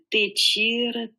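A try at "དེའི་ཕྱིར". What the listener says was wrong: Là, Teichir, là, il y a un génitif. C'est bien de le marquer quand même un peu. Teichir.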